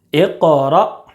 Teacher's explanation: حمزہ ساکینہ کے پڑھنے میں جھٹکا ہوتا ہے